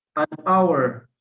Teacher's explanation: the H sound is silent